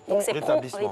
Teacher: Le T n'est pas dit.